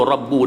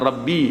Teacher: Rabbu, beza tu Rabbu dengan Rabbi. Baris dia tu lah, sebutan baris tu Rabbu muncul mulut, Rabbi ke bawah.